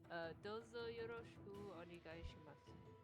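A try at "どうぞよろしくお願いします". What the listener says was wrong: Okay, very good.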